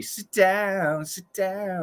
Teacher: No, I would say he's doing a stop T and a D, but it's very British. So he's doing a stop T, but then his D is very much like a T.